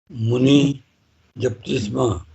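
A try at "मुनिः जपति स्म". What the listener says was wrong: japati, not japti. See, I heard japti. This is wrong. Japati.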